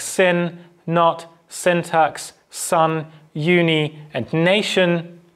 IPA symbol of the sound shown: n